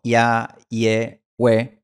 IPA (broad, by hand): ja je we